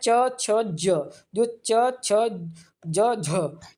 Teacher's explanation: च वर्ग की ध्वनियां है। स्पर्श संघर्षी ध्वनियां है।